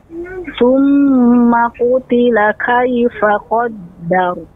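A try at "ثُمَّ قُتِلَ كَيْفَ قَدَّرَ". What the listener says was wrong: Nah, namun catatannya yaitu pengucapannya tidak dimonyongkan roknya. Jadi qaddar, tidak qaddar.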